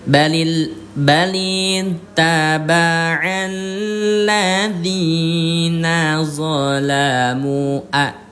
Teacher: Harus dipanjangkan lima ketukan atau lima harakat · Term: Mad jaiz